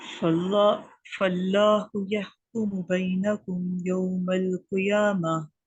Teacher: पहले काफ को बारीक रखना है, दूसरे काफ को पूरा रखना है